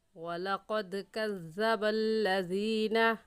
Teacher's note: مخارج کا خیال رکھتے ہوئے پڑھیں تو ایسے پڑھیں گے وَلَقَدْ كَذَّبَ الَّذِينَ، زینہ کو کھینچیں گے کیونکہ یا ساکن سے پہلے زیر آ گئی ہے تو یہ یا مدہ کہلائے گا، اور یا مدہ کو ایک الف کے برابر کھینچ کر پڑھتے ہیں